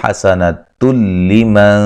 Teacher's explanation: یہاں نون تنوین کا ادغام بلا غنہ ہے